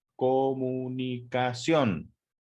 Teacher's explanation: también es una palabra aguda porque porque su sílaba tónica recae decíamos en la última sílaba